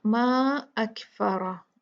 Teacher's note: रा जो है ये हैवी होगा, क्यों? इसके ऊपर फतहा है, जबर है।